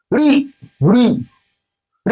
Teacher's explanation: मूर्धा को स्पर्श कर रही जिभ्या · उ ऊ, ओष्ठ से आ रही, इसलिए इसका उच्चारण ओष्ठ है। री री री, मूर्धा, मूर्धा को स्पर्श कर रही जिह्वा।